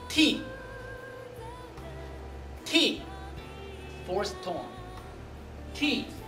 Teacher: the pitch of the fourth tone goes all the way down like no in English